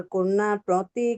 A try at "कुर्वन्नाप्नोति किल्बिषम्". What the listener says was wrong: हाँ, ये कुर्वन्ना दो न है, इसलिए इस पे थोड़ा सा आप जल्दी बोल गए।